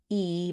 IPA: i